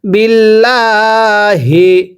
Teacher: আল্লাহ শব্দের পূর্বে হরফের নিচে জের থাকলে আল্লাহ শব্দ চিকন করে পড়তে হয়